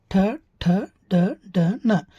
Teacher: ಈ ಠ ವರ್ಗಾಕ್ಷರಗಳು ನಮ್ಮ ಒಳಬಾಯಿಯ ಮೇಲ್ಭಾಗದಲ್ಲಿ ಉತ್ಪತ್ತಿ ಆಗೋದು. ಬೇಕಾದ್ರೆ ನೀವು ಉಚ್ಚಾರ ಮಾಡುತ್ತ ನೋಡ್ರಿ, ನಿಮ್ಮ ನಾಲಿಗೆ ಹೋಗಿ ಒಳಬಾಯಿಯ ಮೇಲ್ಭಾಗದಲ್ಲಿ ಬಿಡ್ತೈತಿ. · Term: ಮೂರ್ಧನ್ಯ ವ್ಯಂಜನಗಳಂತೆ